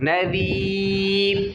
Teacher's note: وقف کریں گے تو را کے اوپر جزم آ جائے گی تو باریک پڑھ لیں گے